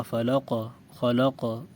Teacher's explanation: قاف موٹے حروف میں سے ہے اور قاف جب ساکن ہوگا تو قلقلہ بھی ہوگا